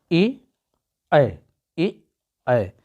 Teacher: यह जो है ए और ऐ है, यह क्या है, इसका उच्चारण कहाँ से, कंठ और तालु दोनों से हो रहा है, इसलिए इसको हम कंठ और तालु कहते हैं।